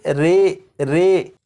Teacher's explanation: یہاں پر لکھا ہے امالہ، زبر کو زیر کی طرف اور الف کو یا کی طرف مائل کر کے پڑھنے کو امالہ کہتے ہیں۔ امالہ کی راء کو اردو کے لفظ قطرے کی راء کی طرح پڑھیں گے، یعنی ری نہیں بلکہ رے پڑھیں گے